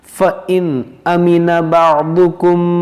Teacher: نون ساکن ہے مگر یہاں پر نون ساکن کے بعد حمزہ ہے تو یہاں پر ہم اخفا نہیں کریں گے، یہاں پر ہوگا اظہار، یعنی نون ساکن اور تنوین کے بعد اگر حروف حلقی میں سے کوئی حرف آتا ہے تو وہاں پر ہم اظہار کرنا ہوتا ہے ہمیں، تو یہاں پر حلقی ہے حمزہ۔